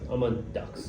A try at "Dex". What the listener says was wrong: If you go for a different vowel, you're on something else. No, Dex. Yeah, you're on Dex.